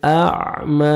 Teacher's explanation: 1 second میم کو کھینچنا ہے، کھڑا زبر ہے۔ ان جاءه الاعمی وما يدريك لعله يزكى، وما الف مدہ 1 سیکنڈ میم کو کھینچنا ہے۔